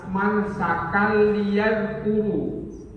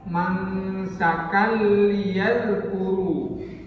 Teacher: ada tanwin ketemu dengan lam, masuk di lam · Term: idgham bila gunnah